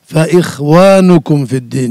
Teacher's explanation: আর ফাইল্লাম তা'লামু আবাআহুম ফাইখওয়ানুকুম না, এই খাইটা পুর হবে তাফখিম নিসবি, আংশিক।